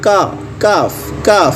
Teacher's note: तो याद रखें काफ के मखरिज से थोड़ा सा मुंह की तरफ हटकर ज़ुबान की जड़ और तालु का सख्त हिस्सा जो है यहाँ से ये हरफे काफ अदा होता है